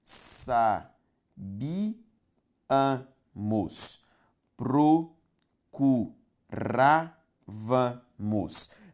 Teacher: Sílaba tônica, gente, olha aqui, ó, antepenúltima em todas elas.